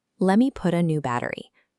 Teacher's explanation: In natural speech, your tongue taps the roof of your mouth, creating a soft D sound. Put a becomes put a and battery becomes battery. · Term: flap T